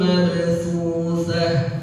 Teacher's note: Tak marbutah. Ketika dibaca waqaf maka dia menjadi huruf ha. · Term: ta marbutah